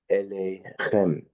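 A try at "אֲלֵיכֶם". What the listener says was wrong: Instead of elechem, it's alechem.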